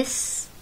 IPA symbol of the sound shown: s